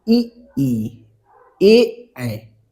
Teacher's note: जब बोलते हैं तो जो अग्र स्वर है जीभ के अगले हिस्से पे ज्यादा बल पड़ता है